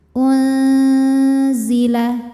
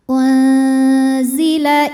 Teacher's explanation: maka Nun disamarkan menuju makhraj huruf z disertai Bui dengungan UN ujung lidah kita sudah menempel pada dinding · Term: ikhfa